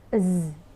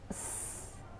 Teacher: You should feel that Z produces a vibration, so it's a voiced sound. Whereas S doesn't produce the vibration, so it's a voiceless sound.